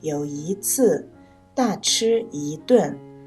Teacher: 己，还以为真的害怕小狐狸呢。故事中的生词有老虎、狐狸、森林、野兽、从前、现在。我们一起看一下故事中变调的地方。从前森林里有一只老虎，有一次它抓住了一只小狐狸，准备大吃一顿。这里出现了好几处一字，根据变调规则，一字在一二三声音节前读四声一，一只的只读一声，所以这里一读四声，也就是一只老虎和一只狐狸。那么又根据变调规则，一字在四声音节前读二声一，所以读有一次大吃一顿时， 因为次和顿都是四声，所以一读二声 ，也就是有一次大吃一顿。同样后面出现的咕噜噜一转、走一趟和一路所过之处，也都是因为一字后面跟的是四声，所以一读二声。咕噜噜一转，走一趟，一路所过之处。接下来我们一起看一下故事中不字的变调。狡猾的狐狸眼珠子咕噜噜